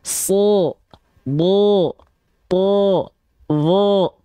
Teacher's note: pangkal lidah yang terangkat pada huruf tebal inilah yang membuat vokal A harokat fathah pada huruf tebal berubah menjadi vokal O